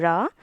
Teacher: நாவின் நுனி மேல் நோக்கி வளைந்து வருடுவதால் ழகரம் தோன்றும்.